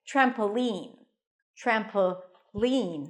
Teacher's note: you can also put the stress on the last syllable